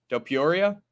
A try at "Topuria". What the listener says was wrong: Yeah, but you put an E on it. You say Tapiria. Like, there's no E.